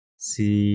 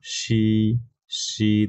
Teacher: সি এর থেকে শি আরো কম বাতাস বের হচ্ছে